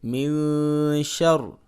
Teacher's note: نون ساکن ہے، آگے اس کے حروف حلقی بھی نہیں ہے اور را اور لام بھی نہیں ہے، لہٰذا یہاں پہ اخفا ہوگا